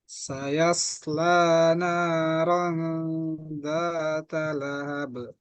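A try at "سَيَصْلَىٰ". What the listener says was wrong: Bilang, suatnya tebalkan. Sayas, sayasla. Sa tipis.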